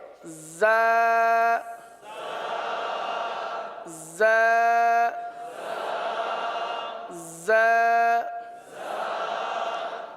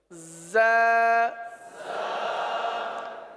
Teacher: اس حرف کو ایک الف تک کھینچ کر پڑھیں گے